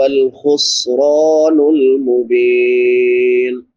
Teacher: را پر پڑھی جائے گی کیونکہ را کے اوپر زبر ہے